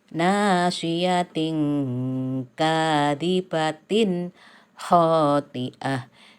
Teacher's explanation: Ini tanwin ketemu kaf, berarti hukum bacaannya ihfa. Dibaca samar-samar.